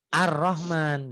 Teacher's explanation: kalau ar-rahman kan lamnya enggak bunyi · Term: alif lam syamsiah, alif lam samsiah